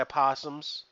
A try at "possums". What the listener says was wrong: Possum. The O is silent. The O is silent.